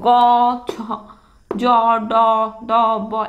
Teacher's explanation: এদের মুখ দিয়ে কাছে নিলে কি হচ্ছে তোমার অল্প প্রাণ, বাতাস কি হচ্ছে কম বের হচ্ছে